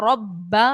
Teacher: ربا میں با حروف قلقلہ کا ہے، تو با کو ہم نے جماؤں کے ساتھ ادا کرنا ہے کیونکہ حروف قلقلہ یہاں پر مشدد ہے.